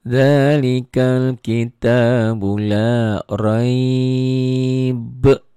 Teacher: Berhenti jadi ada madlin dan qalqalah kubra.